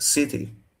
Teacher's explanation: If you take the word city in English, that T there is not aspirated. So that's actually close to the letter to.